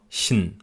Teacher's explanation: Man geht direkt vom Ich-Laut zum N über. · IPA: [çn]